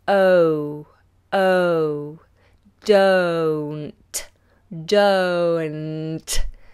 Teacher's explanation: the vowel sound is a diphthong that means it's two vowel sounds moving together